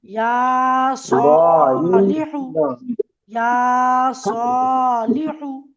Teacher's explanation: ঠিক তেমনি সদের উপরেও খাড়া জবর আলিফ মাদ্দার সমান এক আলিফ পরিমাণ টেনে পড়তে হবে। লামের নিচে জের হারাকাত তাড়াতাড়ি পড়তে হবে, একদম টানা যাবে না। আর হায়ের উপরে পেশ, পেশটাকেও হারাকাত বলা হয়, একদমই টানা যাবে না।